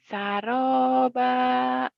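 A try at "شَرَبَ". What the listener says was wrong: Shin.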